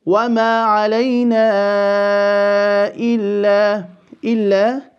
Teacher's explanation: we will now extend this mad al-munfasil or the separated mad 4 vowel counts to وَمَا عَلَيْنَا إِلَّا.